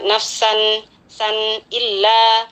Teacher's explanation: Nafsan, ada tanwin bertemu dengan huruf hamzah, hukumnya izhar halqi, dibaca jelas tanwinnya ya, kesan nun sukunnya di sini dibaca jelas, jangan dipantulkan